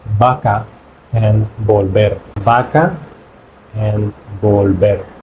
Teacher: b and v is the same thing we don't have any differentiation for that